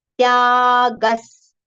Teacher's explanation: Tya we have to prolong, and after ga there is visarga. The sound for visarga is partial sa.